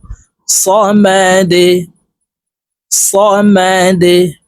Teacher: সদ জবর স মিম জবর মা সমা দাল পেশ দু সমাদু দাল কলকলার হরফ নিচের দিকে ধাবিত করে ধাক্কা দিয়ে উচ্চারণ করব